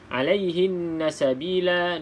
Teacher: Nun yang ada sabdu, maka kita dengung 2 harakat lah macam biasa. Wajib wajibul gunnah nama dia.